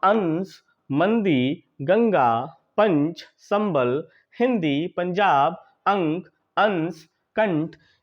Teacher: तो अनुस्वार के उच्चारण में यानी कि अंग के उच्चारण में जो ध्वनि है वह मुंह और नासिका दोनों से ही निकलती है लेकिन नासिका से अपेक्षाकृत जो ध्वनि है वह अधिक निकलती है